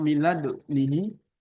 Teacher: Yang pertama dikolkolahkan milad sambil monyong